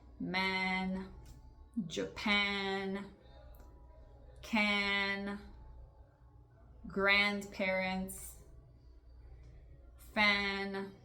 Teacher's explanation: Aí você pode fazer esse som nasal do an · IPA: /æ/